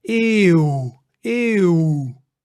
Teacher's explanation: You hear eeuw. So it's a combination between the E and the oe, almost or a W sound